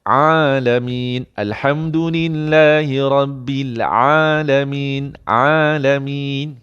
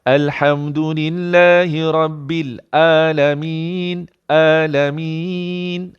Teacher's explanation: Kalau bunyi A, kena menekan sikit alkum tu, itu jadi Ain.